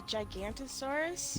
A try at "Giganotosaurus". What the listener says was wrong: No. You think it's a Giganto, right? Giganotosaurus. Giganotosaurus. I know, you think it's a Giganto.